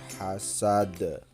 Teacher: Nah yang terakhir hasad itu qalqala, jadi dipantulkan